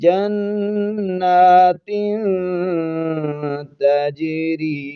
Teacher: آواز کو ناک میں چھپا کر پڑھتے ہیں ، تو اس کو پڑھیں گے جنات تجری، جیم پر قلقلہ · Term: اخفا